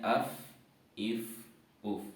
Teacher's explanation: gigi kita atas bertemu dengan bibir e bawah bagian dalam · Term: huruf Fa, huruf fa